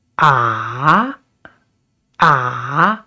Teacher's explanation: And third tone is down and up. So we start with down and then up.